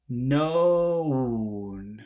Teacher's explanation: first it's O and then it's oo